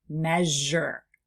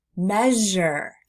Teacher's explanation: Can you hear how my voice is actually turned on, but my lips stay rounded? My my tongue still lifts back and the sound vibrates.